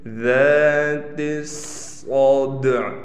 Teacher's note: صاد کو موٹا بھی پڑھیں گے، صاد پر تشدید ہونے کی وجہ سے ٹھہراؤ بھی کیا جائے گا، اور صاد میں سیٹی بھی نکالیں گے۔ · ذات الصدع، ہم نے دیکھیں ٹھہراؤ بھی کیا، صاد کو موٹا بھی پڑھا، صاد میں سیٹی بھی کی، دال پر قلقلہ کریں گے، اور عین وقف میں ختم نہیں ہوگی، عین کو پڑھیں گے